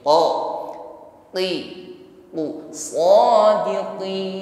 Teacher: tidak ada nafas yang berhembus ketika mengucapkannya sifatnya syidah jadi kuat tekanan hurufnya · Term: qof berkasrah, syiddah